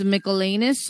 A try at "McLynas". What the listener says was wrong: It's actually pronounced McLynas.